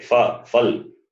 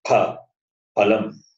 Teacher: In Hindi we say fa, phal, but in Sanskritam there is no fa. It is only pha, phalam. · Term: mahaprana